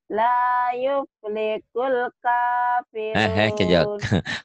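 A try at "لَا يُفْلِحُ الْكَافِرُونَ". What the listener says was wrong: Kelihatan Jawanya. Yuflihul. Bukan yuflikul. Yuflihul. La yuflihul. La yuflihul, bukan yuflikul. Hul, ha.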